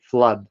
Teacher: But the dental consonant, the, shortened the vowel, so it became flood. And then O was centralized to the vowel A, and that's why you say flood